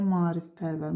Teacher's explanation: Maarifpərvər sözündə deməli qoşa saitlərdən biri düşəcək, biri uzun tələffüz olunacaq.